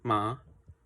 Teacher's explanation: Our first consonant is a bilabial nasal